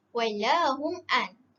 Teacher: Mim mati bertemu dengan ain. Mim mati bertemu dengan ain adalah izhar syafawi